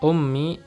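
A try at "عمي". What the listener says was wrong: Iya, kalau huruf ain berarti ammi, ya. Kalau ummi huruf apa? Hamzah, ummi.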